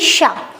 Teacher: इसमें जो आवाज आती है वो घर्षण के साथ आती है, हल्की सी सीटी की आवाज अंदर से आती है, यानी शा। तो इस शा का उच्चारण स्थान आपने देखा होगा, ये शा इच शा नाम तालु, इसको हम तालु से उच्चारित होती है। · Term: तालव्य शा